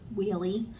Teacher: A lot of times if I say the word really, I have to be very careful because the R will sound like a W and it'll come out really